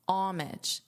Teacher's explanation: In American English, I have heard people leave out the H, so to turn the H into a silent H and pronounce it as homage. Now, in the dictionary for the American pronunciation, they do list that as an alternative in the Cambridge Dictionary.